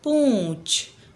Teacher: पूछ मुंह और नाक दोनों से आवाज निकल रही है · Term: चंद्रबिंदु